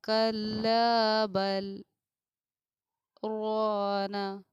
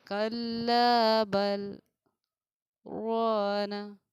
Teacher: سانس نہیں ٹوٹا لیکن آواز کا ہمیں بند کرنا ہے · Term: سکتہ